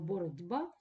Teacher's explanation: питань перед м'яких знаком а слово боротьба відбувається асимілятивний процес б впливає на ть попередній глухий і робить його дзвінким